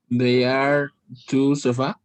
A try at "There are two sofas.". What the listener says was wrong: Only pronunciation, por ahí escucho they. There.